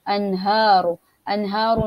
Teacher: nun mati berjumpa dengan ha, maka dia adalah izhar halqi, maka kita zahirkan, kita tidak boleh dengungkan di sini.